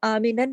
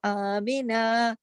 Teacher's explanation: الف کے اوپر ایک چھوٹا الف اور لگا ہوا ہے، آمینہ، نون دو زبر نن کی جو تنوین ہے جب ہم اس پر اسٹاپ کرتے ہیں تو یہ ایک الف اور ایک زبر پڑھا جاتا ہے ، اس کو آمینن نہیں پڑھیں گے، اگر ہم یہاں رکیں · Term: یہاں رکنے کا طریقہ